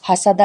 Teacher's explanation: حسدہ میں سین ہے، سین میں سیٹی کی آواز نکلے گی